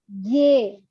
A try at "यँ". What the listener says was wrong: Ye. It should be nasal.